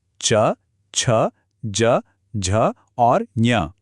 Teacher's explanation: इनको बनाने के लिए जीभ एकदम सपाट होकर ऊपर तालू को छूती है। यही एक्शन इन ध्वनियों को इनका खास साउंड देता है।